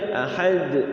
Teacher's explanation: jadi dia Ahad agak dicepatin Ahad langsung setelah sukun pantulkan · Kalau ahadun dia enggak ada tasydid, jadi dia ahad, agak dicepetin, ahad langsung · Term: qalqalahnya